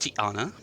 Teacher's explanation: the apostrophe is a glottal stop in that particular place